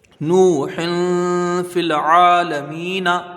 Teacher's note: واو مدہ ہوگا، ہا کے نیچے دو زیر کی تنوین ہے، تنوین کے بعد حروف اخفا کا فا ہے تو یہاں ایک الف کی مقدار غنہ ہوگا ، اخفا کریں گے، فا کو لام سے ملائیں گے، یہاں